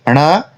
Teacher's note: ण, मूर्धा भी है और नासिका से बोला जाता है